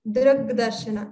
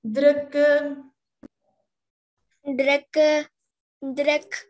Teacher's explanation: So when drak and darshana come together in sandhi, it's drak, drak darshana. Ka is replaced by ga.